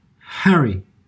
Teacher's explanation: we have a breathy attack, and this is when air is released before the fold compress, such as when we say Harry.